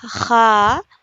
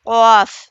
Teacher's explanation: خا اوپری حلق سے ادا ہوگا، قاف زبان کی جڑ اوپر کے تالو سے لگنے سے قاف ادا ہوتا ہے